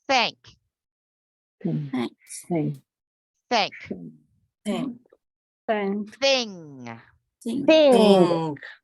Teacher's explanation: there's no sound coming from our throat, but it's a pushing of air.